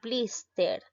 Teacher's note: La mayor fuerza de voz recae en la sílaba bliss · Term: palabra grave